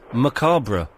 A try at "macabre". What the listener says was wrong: you overemphasise the R.